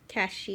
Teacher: it's like a mix of an SH and a th sound